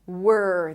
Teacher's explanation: from the W you round your lips. W. And then you transition to the R. Were. There is no O in the middle.